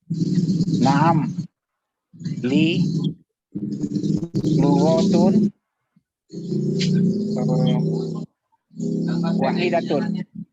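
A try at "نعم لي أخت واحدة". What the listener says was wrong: Li ukhtun wahidatun. Ya, tadi saya dengarnya kayak lugotun gitu.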